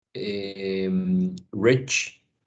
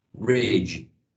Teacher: In this one, we have two affricate sounds in final position. The first one voiceless, the second one voiced.